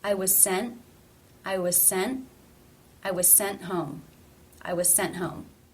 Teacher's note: NT was the exception consonant cluster so the T here is a stop